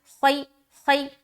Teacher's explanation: یا ساکین سے پہلے زبر، یا لین ہو رہا ہے، نرمی کے ساتھ ادا کریں گے